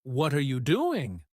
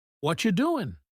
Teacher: they connect words together like instead of saying what are you doing very clearly. They might say what you doing. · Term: connected speech